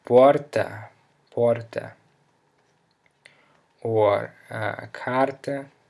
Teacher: if the R comes in the middle of a word, on the accented syllable, it sounds like an even stronger H